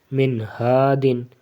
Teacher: حروف اخفا نہیں ہے بلکہ حروف حلقی ہے، ہا، ٹھیک ہے، ہا حلق سے ادا ہوتا ہے تو اس لیے یہ کیا ہوگا، یہاں پہ غنہ نہیں ہوگا